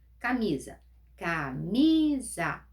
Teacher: Paroxítono. A penúltima sílaba é a mais forte.